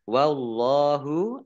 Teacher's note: Oh, Lam fathah berdiri mat tobi'i panjang 2 harokat. Wallahu Allahnya dibaca tebal karena harokat di depannya fathah.